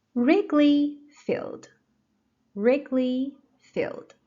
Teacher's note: The stress is on the first syllable, Wrigley.